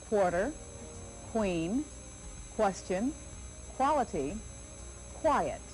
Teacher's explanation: of q watch my mouth as i make the q sound my lips are pushed forward or pursed and open the back of my tongue reaches the roof of my mouth